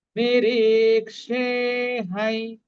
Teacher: অনুসারের পরিবর্তে কি উচ্চারণ হবে? সানুনাসিক হাফ অন্তস্থ ইয়